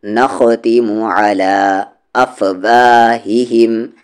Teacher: خا کا مخرج اپر تھروٹ